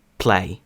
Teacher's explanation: зверніть увагу наскільки сильний йде придих перед звуком